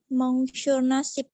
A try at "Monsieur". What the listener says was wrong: Bukan mong, tapi apa? Monsieur, ya, Monsieur Nasib, Monsieur Syafuddin, Monsieur Albi.